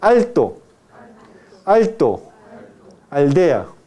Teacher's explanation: Cuando usted pronuncia alto y aldea, el ápice de la lengua debe tocar los dientes superiores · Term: Lateral ápico dental